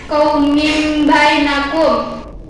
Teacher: Hukum bacaannya iqlab karena tanwin bertemu dengan huruf ba.